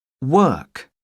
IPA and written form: wɜː(r)k (work)